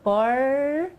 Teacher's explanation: uma retrospecção entendi o movimento da língua é quase que enrolado quando você fala for veja a língua se enrola um pouquinho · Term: r caipira